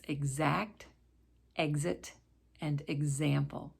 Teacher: the x will sometimes sound like a gz as in the words exact exit and example